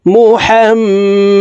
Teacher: দাল যেহেতু কলকলার হরফ নিচে এর দিকে ধাবিত করে ধাক্কা দিয়ে উচ্চারণ করবো